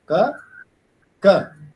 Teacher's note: So if you write it down in phonetic script, it will be ka plus shwa.